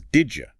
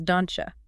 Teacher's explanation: the D and the Y smash together and create a J sound, it becomes did you. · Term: palatalization